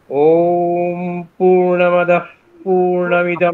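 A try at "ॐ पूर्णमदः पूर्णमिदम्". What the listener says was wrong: তাড়াহুড়ো করছেন কেন? আস্তে আরে। স্বর দিচ্ছেন না একটাও। পূর্ণমদঃ পূর্ণমিদং পূর্ণাৎ পূর্ণমুদচ্যতে পড়ুন।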